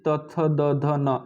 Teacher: आपका जीभ दांत पे जाके टच कर रहा है बार बार, ये दांत से उच्चारण किया जाता है।